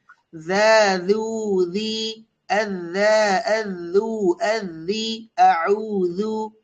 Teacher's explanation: জিহ্বার আগা সামনের উপরে দুই দাঁতের আগা।